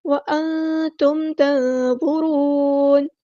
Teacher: نون ساکن کی آواز کو یہاں چھپا دیں گے، اخفا ہو رہا ہے، وہ ہمارا ہیوی لیٹر ہے، پورا ادا کریں گے، را بھی ہیوی لیٹر ہے، پورا ادا کریں گے، اور نون کو ہم ساکن کر دیں گے وقف کرتے ہوئے، اور مد عارض بھی ہوگی یہاں پر۔